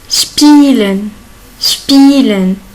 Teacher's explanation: S plus P. Il se prononce sh.